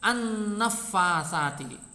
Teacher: Kalau ini Alif lam ta'rif bertemu nun, lamnya dibaca idgham. Lamnya dibaca idgham, dilebur, hilang. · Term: idgham syamsiyah